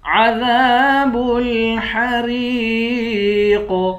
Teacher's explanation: عذاب الحریق، قاف کو موٹا پڑھیں گے، قاف حروف قلقلہ بھی ہے اور حروف مستعلیہ بھی ہے، قاف کو موٹا بھی پڑھیں گے اور قلقلہ بھی کریں گے